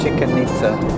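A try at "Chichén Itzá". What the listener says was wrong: It's Chichen Itza, not Chicken Itza. No, it's not spelled like chicken. There's no K.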